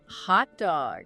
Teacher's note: Do you really hear a strong T sound before the D? Usually it's stopped.